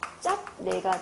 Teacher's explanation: 그래서 짭내가 되는 거고 마찬가지로 뒤에 있는 비음 때문에 비읍이 비음화가 되면서 짬내가 된 겁니다